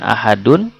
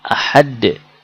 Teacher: tanwin ada ketika berlanjut dan tidak ada ketika berhenti